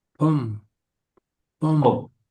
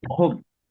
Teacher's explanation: aspirated, with air coming out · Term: aspirated consonant